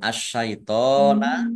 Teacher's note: alif lam samsiah karena tidak dibaca langsung masuk ke huruf berikutnya yaitu shin, ditandai shinnya ada tasdidnya.